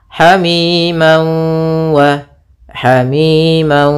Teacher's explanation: berw ini namanya Idam bunah atau Idam maalunah cara membacanya yaitu masukkan tanwinnya ke wau sambil ditahan gunahnya dua harakat